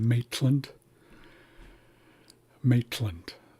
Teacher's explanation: So it's a TL sound, not not C L like clam or KL. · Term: barred lambda